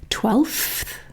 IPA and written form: twelfθ (twelfth)